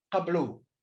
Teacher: the hey is not pronounced, so we have qablu. But the elision does not take place.